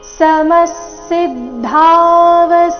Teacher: ವಿಸರ್ಗದ ಉಚ್ಚಾರಣೆ ಇಲ್ಲಿ ಅರ್ಧ ಸ ರೀತಿ ಮುಂದಿನ ಶಬ್ದ ಸ ದಿಂದಾನೆ ಪ್ರಾರಂಭ ಆಗ್ತಾ ಇದೆ